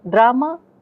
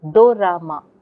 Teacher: When Japanese people hear drama, they report hearing the do ra ma. They insert do. The da and ra cannot come together in Japanese.